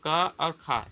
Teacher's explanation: क और ख ये कंठ ध्वनि है। कंठ से निकलने वाली ध्वनियां है।